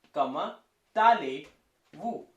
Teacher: Because here the first word is comma, which is ending with the letter T, and the second word, which is allez, which is starting with the letter A. So we will combine the sound of T and A, that is ta.